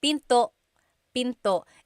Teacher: Don't forget to stop the sound at the end. That's called a glottal stop.